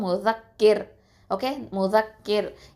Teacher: தர்க்கிக்காக தான் ஓதணும், அதாவது மெல்லினமாக தான் ஓதணும், ரொம்ப வந்து அழுத்தமாக நம்ம உச்சரிக்கக்கூடாது. முஸக்கிர், ஓகே, அவ்வளவுதான். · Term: ரா சுக்கூன்